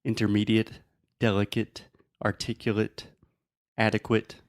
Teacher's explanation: that end in a-s-e so a and a consonant and E it is not to make the eight sound it makes the it sound